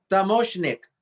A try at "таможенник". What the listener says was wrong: You see, in this word, таможенник, we have double N. And we read as double. We don't make them shorter.